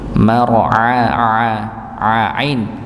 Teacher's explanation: Walaupun sekali lagi tidak boleh berlebihan untuk menggetarkan juga tidak boleh sama sekali tidak ada getaran ya begitu. Mara sama ainnya juga di dibaca sesuai dengan tempatnya yaitu tengah lidah.